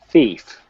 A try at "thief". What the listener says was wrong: You don't forget the TH sound there. Thief. Thief. Okay, let's work on the F, which is at the end of the word. Say frank. So that same F we want to use in thief. Thief. Thief.